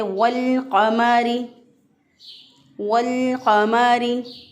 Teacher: क़ाफ के साथ लाम का इदगाम नहीं हुआ बल्कि लाम साकिन पढ़ा जा रहा है और क़ाफ भी अलग से पढ़ा जा रहा है, तो इसे कहते हैं इजहार क़मरी, इजहार क़मरी।